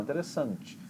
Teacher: você vai carregando ela e dá força lá no final